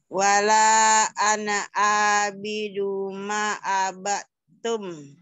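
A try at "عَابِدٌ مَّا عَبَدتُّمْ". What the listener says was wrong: Bagus tapi dumnya masuk. Wala ana abidum ma abattum. Abadnya hilang, masuk ke ta, abatum. Diidghamkan.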